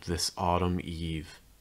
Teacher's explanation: heavier stress on eve